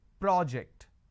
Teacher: When I'm stressing on the first syllable, it becomes a noun.